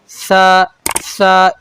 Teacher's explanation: ज़ुबान और दांतों के दरमियान से आवाज़ और हवा पास होगी, कि आवाज़ हवा बाहर आएगी।